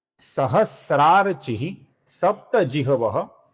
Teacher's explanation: ये स्र है, सहस्रार्चिः। इस विसर्ग का आगे स आने के कारण हम अपूर्ण स ऐसा उच्चारण करते हैं। ये ची ह्रस्व है।